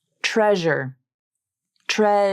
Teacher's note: the Z consonant in the word treasure is always pronounced with 100% of its voicing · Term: zh consonant